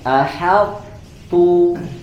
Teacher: Tebalkan huruf to-nya, tipiskan huruf ta-nya.